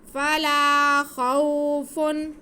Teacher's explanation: واو ساکن سے پہلے زبر، واو لین، اس کھینچنا نہیں ہے